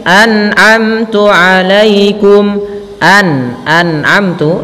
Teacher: jangan sampai nunnya memantul. Banyak yang terjadi ketika itu membacanya dengan nun mantul, an'amtu alaikum, jangan. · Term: izhar